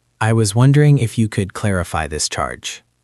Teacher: Notice how the words wondering if you could flow together.